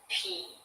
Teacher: if you say P, my mouth is tighter and it does not vibrate when I say P.